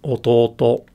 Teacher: So this is pronounced as ototo, and that probably sounded kind of relatively flat to you because the initial rise in pitch isn't that dramatic in Japanese. It's the drop that's real dramatic. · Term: odaka pattern